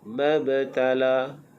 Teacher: Ba yang di atasnya ada sukun dibaca dengan qalqalah sughra.